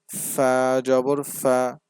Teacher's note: ফা উচ্চারণের সময় সামনের উপরে দুইটি দাঁত ঠোঁটের সাথে লাগবে মুখ থেকে সামান্য পরিমাণ বাতাস বের হয়